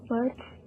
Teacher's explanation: in the pronunciation of birds, you will pronounce it with the last letter is Z and it is a voiced sound